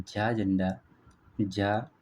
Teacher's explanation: तालव्य महाप्राण और घोष हो जाते हैं।